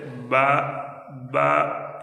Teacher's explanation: دونوں ہونٹ یہ تری والا جو اندرون حصہ ہے وہاں دونوں ہونٹ ملیں گے تو اس سے با، با یہ ادا ہوگا